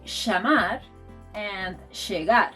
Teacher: in Argentina and Uruguay, this sound is pronounced sh.